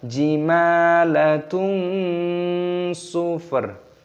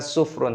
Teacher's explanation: di sini ada dhomah tanwin yang bertemu dengan huruf shod ini hukumnya dibaca ikhfa cara membacanya yaitu dengan cara disamarkan jadi dibaca samar